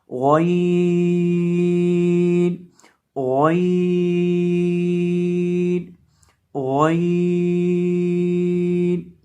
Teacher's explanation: आइन को अदा करते हैं हलक के वस्त से, हलक के दरमियान से, वस्ते हलक से अदा करते हैं, जहां से हा को अदा करते हैं।